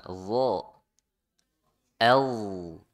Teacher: Jadi dha makhrajnya di ujung lidah nempel ke ujung gigi seri ya, ke ujung-ujung gigi seri.